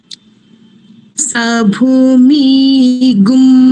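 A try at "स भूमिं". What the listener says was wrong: ময় দীর্ঘ ইকার নেই, ময়ে দীর্ঘ ইকার নেই, ময়ে হ্রস্ব ইকার রয়েছে।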